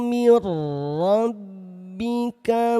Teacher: Di sini ada idgham bila ghunah. Masukkan nun sukun ke dalam huruf ro tanpa disertai dengan dengung.